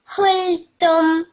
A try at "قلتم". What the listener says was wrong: Just your qaf over here. Try to pronounce that from your throat. So, قلتم qa.